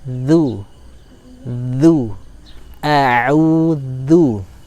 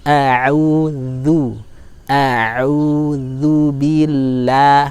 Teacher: Dzal punya makhraj, dia adalah ujung lidah bertemu dengan ujung gigi seri atas. Maka cara melafalkannya dengan cara yang agak mudah adalah mengeluarkan sedikit lidah, ya, sehingga nanti akan pas bertemu antara ujung lidah dengan ujung gigi seri atas. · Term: huruf dzal